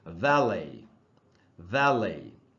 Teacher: French language में एंड में जो कॉन्सोनेंट होता है उसका प्रोनाउंसिएशन नहीं होता, उसका उच्चारण नहीं होता, इसीलिए इसमें जो टी है लास्ट में VALET, उस टी का उच्चारण नहीं होगा, साइलेंट होगा